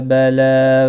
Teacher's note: لام کے اوپر کھڑی زبر ہے، ایک الف کے برابر کھینچ کر پڑھیں گے